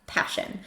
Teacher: Remember, puff of air for the P.